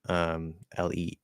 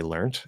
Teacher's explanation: And I think British people still say learnt. Some Americans might say learnt, but generally Americans say learned with a D sound.